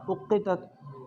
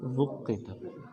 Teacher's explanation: تو باقی پڑھیں گے حمزہ کے ساتھ اقتت، تو بصری صاحب پڑھیں گے وقتت